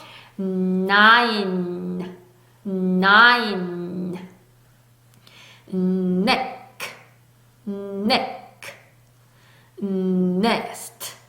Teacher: 유지가 되고 있죠. 성대가 떨리고 있죠. 울리고 있죠. 그래서 유지되는 울리는 소리 N입니다.